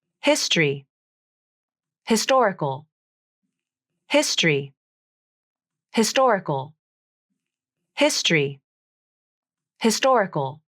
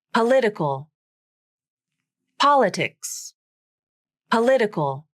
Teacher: primary stress is on the syllable before the suffix